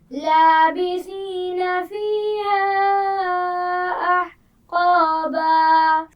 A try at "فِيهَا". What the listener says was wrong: فیہا، ہا کے مخرج کو واضح کیجیے. دوبارہ پڑھیے.